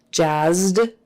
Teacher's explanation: it would be a d because z is voiced and so is d